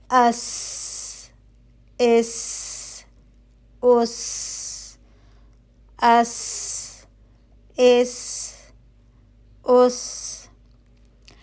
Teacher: इस हर्फ में भी जबान और दांतों के दरमियान फासला होगा ताकि सीटी की सी आवाज पैदा हो सके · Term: हर्फ सीन